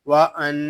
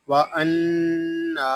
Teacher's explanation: واو زبر وا حمزہ نون زبر ان وان. یہاں نون میں شدت ہے، اس کو غننے کے ساتھ ادا کریں گے. نون کھڑا زبر نا وَأَنَّا.